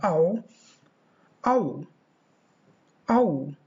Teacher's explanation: Two diphthongs glide towards short vowel o, so that as the tongue moves closer to the roof of the mouth, there is at the same time a rounding movement of the lips